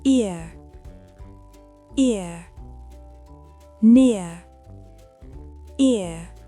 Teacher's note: Le son ear. Commencez avec un I bref, puis relâchez complètement vers E. La fin est presque avalée.